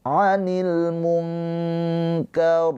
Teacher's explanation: nunnya ini dibaca dengan samar ditahan dua harakat sambil bersiap ke huruf kaf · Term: ikhfa hakiki